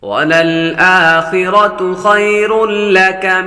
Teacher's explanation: را پر تنوین ہے. تنوین کے بعد لام حروف یرملون میں سے آ رہا. غنہ نہیں کریں گے. لام اور را میں غنہ نہیں کرتے باقی چار میں غنہ کرتے ہیں.